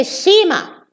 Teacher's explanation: Cinema, they delete the N, they say sima in Egypt